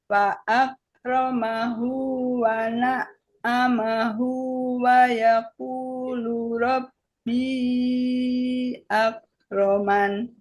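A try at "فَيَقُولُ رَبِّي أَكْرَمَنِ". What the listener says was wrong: Masih ketukar fa-nya dengan wa tadi. Fayaqulu, ya.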